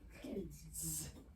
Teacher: Because D is a voiced consonant. So the S is voiced.